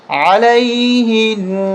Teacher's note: یہاں پر اسٹاپ کریں گے تو علیہن غنہ تو ہوگا لیکن یہ زبر ختم ہو جائے گی